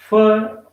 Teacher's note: in english fur is labiodental we use our lower lip and the upper teeth lower lip is the active articulator in the production of english